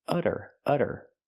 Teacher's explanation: We see the double T pronounced as a fast D because it's between vowels.